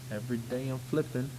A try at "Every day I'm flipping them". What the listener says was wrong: It needs another syllable.